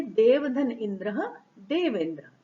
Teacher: देव का अ, इंद्र का ई, दोनों मिलके हुए ए, और शब्द बना देवेंद्र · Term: गुण संधि